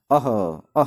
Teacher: तो अः जैसे ही आप बोलेंगे तो लास्ट में ह की ध्वनि उत्पन्न होगी। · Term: विसर्ग